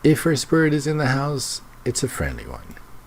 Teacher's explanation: Notice the rising and falling intonation there.